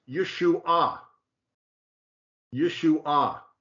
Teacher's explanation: Accent on the third syllable